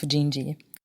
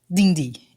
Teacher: I'm from Rio de Janeiro, so was Jobim, so the D here is often spoken like a G and the T like a chi